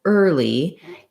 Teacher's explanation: You may actually find this one slightly easier because the L in early, is a light L. It starts its own syllable.